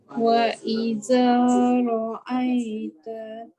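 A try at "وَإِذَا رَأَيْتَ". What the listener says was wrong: Tolong keluarkan lidah huruf zal. Wa idza ra'aita.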